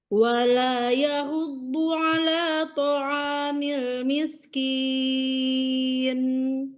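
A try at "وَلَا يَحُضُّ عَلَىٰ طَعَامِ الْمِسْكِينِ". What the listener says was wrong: Miskin, angkat lagi miskin.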